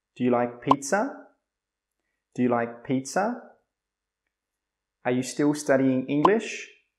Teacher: The intonation is rising at the end.